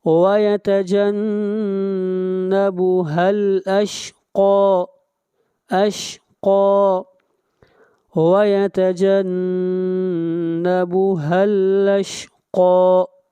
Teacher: قاف کو کھینچ کر پڑھیں گے ایک الف کے برابر